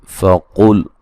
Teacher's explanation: من العلم فقل قاف کو موٹا ادا کریں گے.